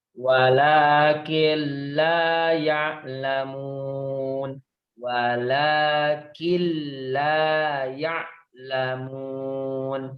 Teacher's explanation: karena dia bertasydid tetap ditekan tapi tidak didengungkan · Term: idgham bilagunnah